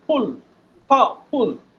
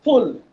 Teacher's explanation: এটা হচ্ছে উপরের দাঁত নিচের ঠোঁট, ফুল, অর্থাৎ দুইটা ঠোঁট লাগানো যাবে না, ফুল। হ্যাঁ একটু প্র্যাকটিস করে দেখবেন।